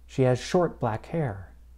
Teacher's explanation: In this case, there is stress on the first adjective and the noun. The noun still gets the most stress.